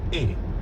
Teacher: Instead of that English A sound, the French vowel is shorter.